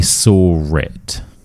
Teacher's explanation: saw ends in an or sound. The next word starts with a vowel sound. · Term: intrusive R